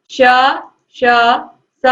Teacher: ऊष्म व्यंजन वे व्यंजन होते हैं जिनके उच्चारण में जो हवा होती है वह उच्चारण स्थानों को छूते हुए सीटी की ध्वनि के साथ बाहर निकलती है